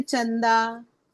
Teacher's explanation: ऊपर में जो बिंदु न है वो न, आधा न के जैसा उच्चारण होगा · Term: अनुस्वार बिंदु